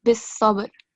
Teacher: Okay? And then in the last verse on ba, you have to perform kalkala. Okay? A jerking sound. So instead of bis sabr, it will be bis sabr.